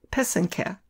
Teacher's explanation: The accent is on the second syllable. An easy way to remember how to say it is that the first and third syllable rhyme.